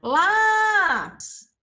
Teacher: última sílaba PIS penúltima la então Aqui nós temos o quê uma paroxitona · A sílaba que eu demorei a maior parte do tempo chamando, o lá. Então, ó, última sílaba, pis. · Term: paroxítona